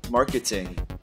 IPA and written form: ˈmɑːrkɪtɪŋ (Marketing)